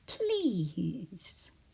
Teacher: Please at the word P E Z is what we hear. It's one of those words where we hear Z at the end, but we write it S E.